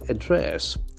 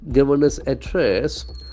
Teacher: The accent for second syllable, address.